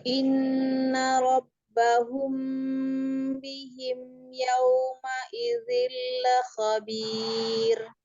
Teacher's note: Kemudian waw sukun sempurnakan yau gitu ya. Yauma idzil yau monyongkan.